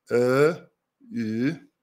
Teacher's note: The tongue is in the front position for these sounds. But ö, ü, they're also front, but they're rounded.